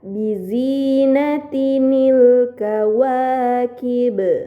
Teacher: tanwin tersebut harus dibaca Nun kasrah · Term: Nun iwad